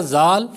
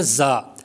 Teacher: زا سیٹی کی آواز بھی پیدا ہوگی، اور یہ زال کی نسبت تھوڑا سختی سے بھی پڑھا جائے گا.